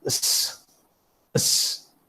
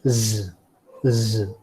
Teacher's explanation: while pronouncing s, you find that there is no vibration, and while pronouncing z, there's a vibration.